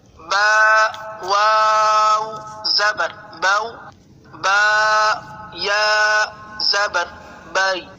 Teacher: یا ساکن سے پہلے زبر آ گیا تو حرف لین کے قاعدہ لگنے کی وجہ سے یہاں پر ہم اس کو بغیر کھینچے، بغیر جھٹکا دیے نرمی سے معروف پڑھیں گے